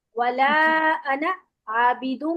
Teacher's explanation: ये एक्सेप्शन है कुरान मजीद की इसमें अलिफ नहीं पढ़ा जाता